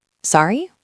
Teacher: Sorry, with a rising intonation, means please repeat that. Rising intonation, your voice goes up at the end, like a question.